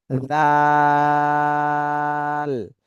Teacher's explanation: আগা সামনের উপরের দুই দাঁতের আগার সাথে লাগবে জাল এটা আবার আগা সামনের উপরে দুই দাঁতের আগার সাথে লাগায় নরম করে উচ্চারণ করতে হবে এটা তিন আলিফ টান দিতে হবে এর আগেরটা এক আলিফ এটা